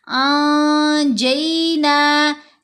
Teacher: انجیناکم، انجینا نہیں پڑھنا ہم نے، یہاں نون ساکن ہے، اس کے بعد ہے جیم، جیم حروف اخفا میں سے ہے، تو اس لیے ہم نے نون کی آواز کو ناک میں چھپا کر پڑھنا ہے